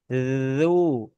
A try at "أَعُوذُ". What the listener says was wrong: Jadi jangan langsung ditarik, tapi zu. Alirkan suaranya.